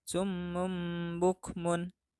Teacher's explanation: Nah, dalam kalimat ini tanwin menghadapi ba. Maka tanwin tersebut beralih bacaan menjadi em. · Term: iklab